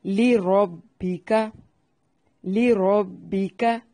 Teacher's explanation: لام کو باریک اور را کو خوب موٹا